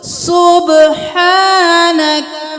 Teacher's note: ح ایک الف کے برابر کھینچیں گے، کھڑی زبر ہے